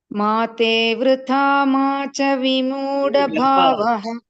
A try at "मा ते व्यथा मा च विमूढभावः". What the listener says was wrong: मा ते व्यथा, not वृथा, व्यथा.